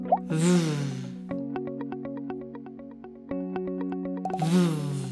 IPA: v